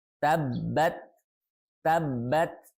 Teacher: Di sini ada ta sukun, ya, tabbat. Nah, ta itu memiliki sifat hamas dan akan terdengar lebih jelas ketika ta ini sukun. Sifat hamasnya akan terdengar lebih jelas, ya.